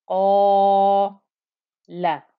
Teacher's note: the back of my tongue stays thickened up, stays elevated at the back of my mouth for the whole of that 2-count stretch. So that's why I have qa, la.